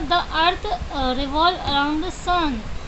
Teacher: जो आपकी टोन है जो लो डाउन होती चली जा रही है, मतलब उसका फॉल हो रहा है, फॉलिंग टोन आ रही है